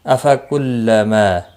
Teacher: ما الف مدہ ہے، ایک الف کے برابر کھینچ کر پڑھیں گے، باقی کسی بھی حرکت والے حرف کو کھینچنا نہیں۔